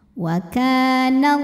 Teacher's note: lam pada lafaz Allah dibunyikan secara tafkhim karena huruf sebelumnya berbaris fathah maka dibacanya tebal pangkal lidah naikkan